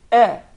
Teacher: the hamza which precedes the kha, we tend to make it heavy as well, while the hamza or the alif is always soft. So it is a mistake to say akh.